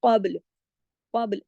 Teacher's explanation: قاف یہاں موٹا تو پڑھا جائے گا، لیکن ہلایا نہیں جائے گا، با کو ہلایا جائے گا، اس لیے کہ با کتبن جدن کا لیٹر ہے. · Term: کلکلا